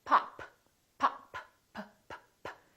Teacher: Look at my lips. This is a stop because I'm stopping the airflow.